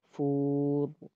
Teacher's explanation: واو ساکن ہے اس سے پہلے پیش ہے، اس کو واو مدہ کہتے ہیں، اس کو ایک الف کی مقدار کھینچیں گے فور. اور را ہے اور را یہاں پہ ساکن ہو گیا ہے.